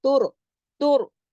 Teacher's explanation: रा मोटा पढ़ा जाएगा क्योंकि रा से पीछे वाला जो लफ्ज है ता, उस पर पेश है यानी दम्मा है, तो उसके असर के तहत रा भी मोटा हो जाएगा, तुर, तुर, जमाओ के साथ, तुर जऊन, ज तुर जऊन, ऐन को हलक हरफे हल्की है, गले से पड़ी, अलिफ की तरह नहीं, तुरजऊन।